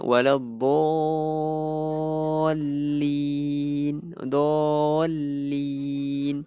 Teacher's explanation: Dallin tu alif huruf alif tu bertemu dengan huruf yang bertanda sabdu. So kita kena memanjangkan dia 6 harakat. Tu wajib lah 6 harakat. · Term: mad farq